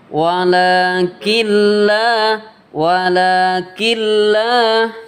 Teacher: idgam itu memasukkan non kepada lam ya bilaguna dengan tanpa berdengung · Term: idgham bilagunnah